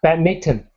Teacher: I think British pronounce it badminton with this pronouncing the N, but Americans make the N silent